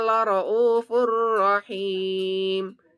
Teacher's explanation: Di sini ada tanwin, domah tanwin bertemu ro. Maka dibaca masuk tanpa dengung atau hukum bacaannya bernama idgham bila gunnah. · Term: idgham billah gun